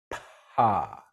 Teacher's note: Okay, my little vocal cords are kind of separated from each other, and so air can get through them. And so when my lips part, you can feel that puff of air on your hand